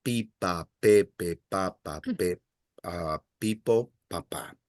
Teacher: the sound for the letter P, you require less puff of air